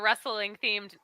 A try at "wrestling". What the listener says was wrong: I love that how you pronounce wrestling is with an extra syllable too. Yes, that again, added touch.